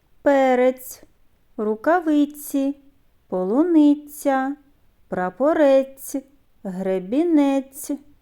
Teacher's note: спільний звук у цих словах це М'який приголосний ц у звуковій схемі позначаємо двома рисками